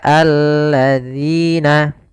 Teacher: Hati-hati jangan terbaca dengan allazina. Ini kesalahan yang sering terjadi, diganti dengan huruf zai. · Kemudian sahabat Quran, hati-hati di dalam pelafalan zalnya. Zal di sini agar dia terbaca dengan baik, itu dengan ujung lidah kita menempelkan dengan gigi sari atas